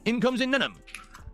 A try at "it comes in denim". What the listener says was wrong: Denim! You're just not enunciating the fucking D!